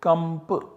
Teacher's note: Then we have kanpa, the verbal root in which na is followed by p which is chal and so we get na substituted by anuswara kampa in this fashion. Anuswarasya yai parasavarna ha will apply and will substitute this anuswara by ma, so we get kamp.